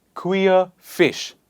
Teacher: Please remember r is silent